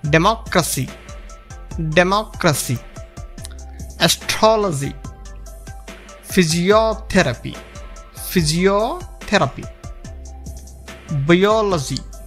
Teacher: you stress the third syllable from the end.